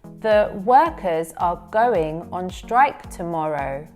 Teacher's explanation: We don't stress syllables in function words, which in this example are the, are, and on.